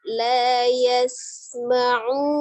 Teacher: hati-hati untuk di huruf sinnya, sukun safirkan, ya, desiskan. Jadi tidak langsung la yasma'u, tidak, tapi la yasma'u, ya.